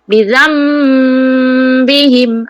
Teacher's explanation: Tanwin berjumpa ba. Menukarkan sebutan itu kepada mim terus. Bizambihim, dan dengung. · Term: iqlab